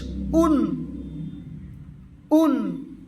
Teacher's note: দুই পেশকে উচ্চারণ করতে হবে মুখের সম্মুখ থেকে দুই ঠোঁট গোল করে। যেমন হামজা, দুই পেশ উন, উন, দুই ঠোঁট গোল করে সম্মুখ দিয়ে আওয়াজ বার হবে, তাহলে ভালো করে উচ্চারণ হবে। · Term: তানউইন